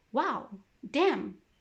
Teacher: The fourth tone, is the falling pitch when you're amazed or angry